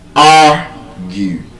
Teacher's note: When you pronounce the word argue, you would see that the stress is on the first syllable.